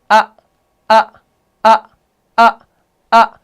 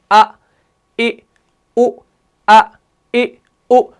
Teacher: ये जो हमजा है ये कहां से अदा होता है? हलक के निचले वाले हिस्से से। इसमें जुबान का कोई दखल नहीं होता